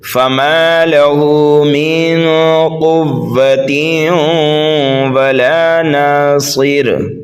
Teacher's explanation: صاد کو پر پڑھیں گے اس لیے کہ یہ حروف مستعلیہ میں سے ہے، را کو باریک پڑھیں گے اس لیے کہ را کے نیچے دو زیر ہیں · ہم اخفا کریں گے، نون ساکن کے بعد قاف حروف اخفا میں سے ہے